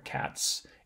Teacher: voicing quality of the sound that ends the root word so cat ends in a voiceless T so the plural suffix is going to be voiceless there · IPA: [kæts]